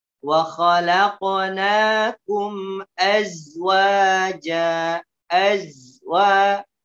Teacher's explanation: Azzaini memiliki sifat rokhowah rokhowah artinya suaranya mengalir elzi ingat nafasnya tidak boleh keluar yang membedakan antara sesak dengan